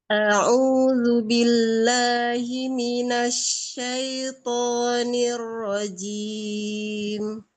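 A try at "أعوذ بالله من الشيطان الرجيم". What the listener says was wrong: Umi hamzahnya dibuka yang di depan.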